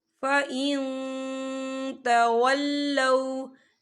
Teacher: یہ دیکھیے فَإِن، یہاں نون ساکن ہے، نون ساکن کے بعد تا آ رہا ہے، اور تا جو ہے اقفا کا ورڈ ہے، تو ہم یہاں اقفا کریں گے، نون ساکن کی آواز کو ناک میں چھپائیں گے